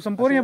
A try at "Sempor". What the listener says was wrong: Sempor atuh ujang. Sempor. Sempor bukan sempur. Sempor.